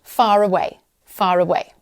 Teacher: And this is really similar, but it occurs when a word ending in the letter R is followed by a word beginning with a vowel sound. In non-rotic accents, the R is pronounced to connect the two words. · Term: linking R, the linking R